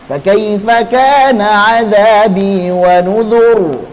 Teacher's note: Ra sukun sebelumnya dhammah ditebalkan.